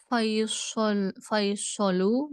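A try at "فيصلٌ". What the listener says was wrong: Faisalun. Jadi kita coba karena fokus kita adalah harokat terakhir, maka kita komplitkan membacanya.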